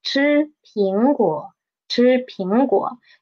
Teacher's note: We will just need to pay attention to the disyllabic word, which is 苹果, and we will read the 果, the third tone, into half the tone